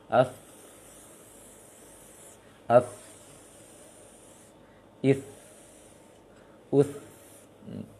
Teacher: tha titik tiga, tha, ujung lisan dengan ujung gigi atas.